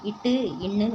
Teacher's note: நாக்குடன் நுனி வந்து அண்ணத்தோட நுனியை பொருந்துறதுனால பிறக்குது